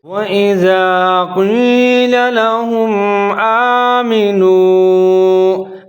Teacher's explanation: قاف کو موٹا پڑھنا ہے، چاہے قاف کے نیچے زیر ہو یا زبر ہو